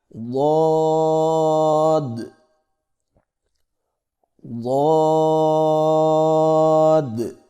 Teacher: زبان کے پچھلے حصے کو تالو کی طرف بلند کرتے ہوئے زبان کے موٹے کنارے کو اوپر والی داڑوں کی جڑ پر آہستہ آہستہ نرمی سے لگا کر خوب موٹی اور دراز آواز میں پڑھیں